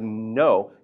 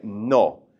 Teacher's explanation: But what you want to do is push that tongue forward just a little bit more than we do in English. Instead of no, you want to say no.